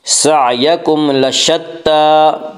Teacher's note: ता के ऊपर खड़ा ज़बर है, खड़ा ज़बर को एक अलिफ के बराबर खींच कर पढ़ेंगे